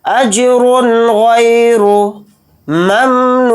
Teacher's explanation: गैन के साथ या लीना, गैन या ज़बर, गै को जल्दी पढ़ेंगे, रा को जल्दी पढ़ेंगे और रा को मोटा भी पढ़ेंगे। इजहार इस तरह से करेंगे इसके अंदर, अजरुन गैरु ममनून, मीम को मीम साकिन के अंदर मिला देंगे, नून को वाव मद्दा के साथ थोड़ा खींच कर पढ़ेंगे, नून को साकिन कर देंगे हालत वक्फ में।